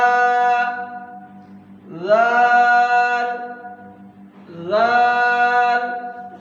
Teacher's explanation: اوپر والے دانتوں کا کنارہ اور زبان کی نوک سے پڑھیں گے